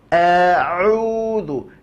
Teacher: murnikan keluarnya dari tengah tenggorokan, maka ia tak akan masuk ke dalam hidung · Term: huruf ain